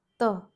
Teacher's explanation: 16th, dental letters. Tip of the tongue touches the teeth.